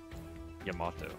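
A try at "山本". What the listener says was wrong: there's an extra moe in there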